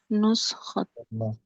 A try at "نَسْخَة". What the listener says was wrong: Tapi naskah lebih nuskhah. Di fathah betul, di fathah. Jamaknya baru dhamma. Nusakhun. Mufradnya naskah. Kalau bahasa kita naskah. Naskah. Naskah. Jadi mufradnya fathah. Jamaknya baru dhamma.